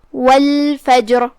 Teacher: تو ہم لام کو ظاہر کریں گے اور اسے جزم سے پڑھیں گے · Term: لام القمریہ